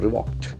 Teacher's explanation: And ED endings after the sound K will be T